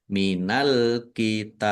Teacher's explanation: ini qalqalah kubra dipantulkan yang jelas · Dibaca panjang boleh 6, 4, atau 2 harokat. Dan dibaca kolkolah atau memantul karena baknya dibaca sukun. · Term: kolkolah kubro